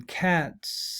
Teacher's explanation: because cat ends in an unvoiced sound, the plural s is pronounced s, is the phoneme s.